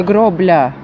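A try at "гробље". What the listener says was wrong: на конце «е».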